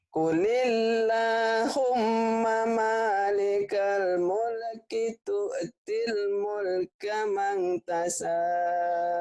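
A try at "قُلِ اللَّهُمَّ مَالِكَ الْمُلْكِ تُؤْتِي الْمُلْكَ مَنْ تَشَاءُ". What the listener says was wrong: Tinggal karena yang ngajarinya Bu Rehan, jadi shinnya nggak keluar. Mang tasya ya shinnya nih hutangnya. Qulillahumma malikal mulki tu'til mulka man tasya.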